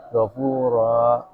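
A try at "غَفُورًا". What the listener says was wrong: Salah itu seakan-akan ada hamzah. Kita langsung nutup gitu. jadi istilahnya Ketika mad kayak gitu bukan kita menutup ini ya, menutup pita suaranya, tapi kita bukan menutup tapi Habiskan saja. Suaranya jangan dikeluarkan gitu loh.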